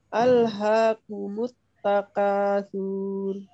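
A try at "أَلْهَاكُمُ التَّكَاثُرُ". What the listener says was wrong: Pendek Bu, suaranya pendek. Sur.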